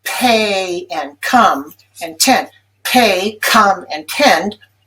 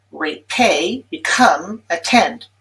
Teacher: So at the beginning of stressed syllables in words like pay and come and tend, pay, come, and tend, those are highly aspirated.